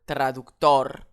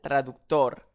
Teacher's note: Le mot s'accentuera sur le O final